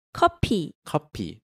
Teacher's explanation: Change that F sound to the P sound because in Korean there's no F sound.